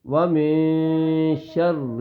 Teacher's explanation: نون ساکن کے بعد یہ شین آ جائے تو اس وقت اخفا ہوگا